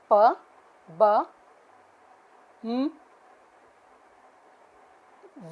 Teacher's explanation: sounds produced with two lips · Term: bilabial sounds